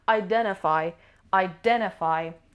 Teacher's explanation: Stress is on the second syllable.